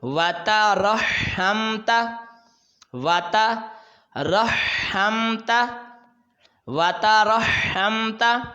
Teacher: اس واو اور تا کو دونوں کو جلدی پڑھیں گے، را کو ہا کے ساتھ ملائیں گے اور ہا کو میم کے ساتھ پھر تا کو جلدی پڑھیں گے۔